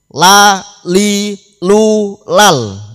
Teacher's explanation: sisi lidah bagian depan mengenai gusi gigi depan atas menjadi makhraj huruf lam